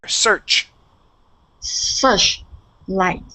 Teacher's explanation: we punch on that ch and the air stops. Okay, when we have an sh, okay, these two letters, okay, the airflow continues. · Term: ch sound